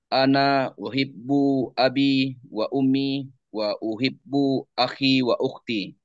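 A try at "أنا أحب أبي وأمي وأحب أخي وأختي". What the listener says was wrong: Bagus lagi ini. Barakallahu fiik.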